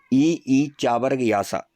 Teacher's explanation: सब नाम वाले क्या होते हैं तालू से बोले जाते हैं ई ई चा वर्ग के पूरे पांचों वर्ण या और सा इन सब का उच्चारण स्थान क्या होता है तालू होता है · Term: तालव्य